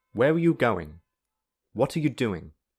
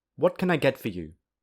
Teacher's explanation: The falling intonation can also be used in questions that begin with a question word.